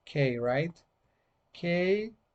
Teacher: it's voiceless, it's velar, and stop